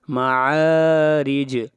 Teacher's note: جیم کے اوپر قلقلہ ہوگا، آواز کو ہلائیں گے